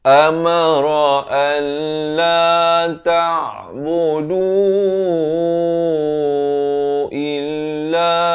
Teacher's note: Du dan la ini masing-masingnya 4 atau 5 harakat. Tekankan. dan hanya diberikan tanda mati mendatang bila kita pilih untuk waqaf di sini.